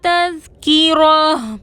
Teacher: را پر زبر ہے، را کو موٹا پڑھیں گے